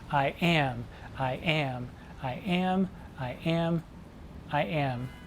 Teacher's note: an unstressed syllable followed by a stressed syllable five times and you can remember that by saying I am I am · And as I said, iambic pentameter is 10 syllables, an unstressed syllable followed by a stressed syllable 5 times